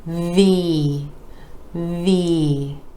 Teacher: where the top teeth are connecting with the bottom lip move our vocal cords are engaging for the voiced v